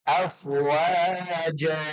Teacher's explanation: kalau diwakafkan menjadi panjang dan tanwinnya hilang